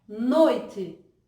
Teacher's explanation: Inevitavelmente você percebe que é a vogalzinha O, noite. E aí a gente percebe que o I quase não aparece, ele perde tonicidade. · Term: semivogal